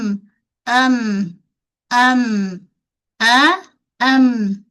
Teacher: Mim suara naik ke hidung